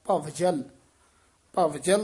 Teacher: ਬਬ ਨਹੀਂ ਲਾਉਣਾ ਵਵ ਪੂਰਾ ਬੋਲਣਾ